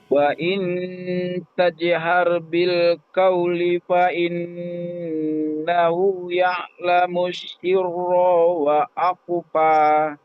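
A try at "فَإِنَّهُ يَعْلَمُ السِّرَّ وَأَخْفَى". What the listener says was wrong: Wa akhfa, dari fa innahu, coba fa innahu sirranya dibaca pendek.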